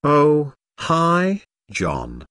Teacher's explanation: Notice the rising intonation here. is excited to hear from John and is very pleased that he called her.